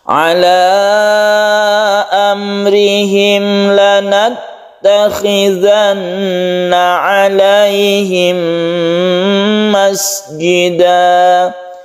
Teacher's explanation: Lanattakhizanna ini kha zalnya juga, kemudian kita tahan di tasydid nun, kemudian alaihim ini kita tahan juga, mim mati bertemu dengan mim idgham mimi, ini kita dengungkan karena masuk ke mim sehingga menimbulkan tasydid mim. Tasydid mim itu kita tahu bahwa dia itu membacanya berdengung.